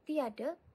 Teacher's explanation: Dan apabila kita sebut tiada, seolah-olah kita menambahkan huruf Y di tengah-tengah vokal I dan vokal A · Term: vokal rangkap